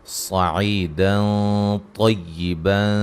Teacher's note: نون تنوین کا موٹا اخفا ہے